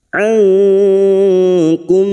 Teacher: Ikfa hakiki. Kita samarkan bunyi nun sukun dan mendengung selama 3 harokat